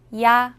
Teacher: 야는 먼저 이를 소리 내다가 바로 이어서 아를 소리 내며 발음합니다. 이와 아를 순서대로 빠르게 말해요.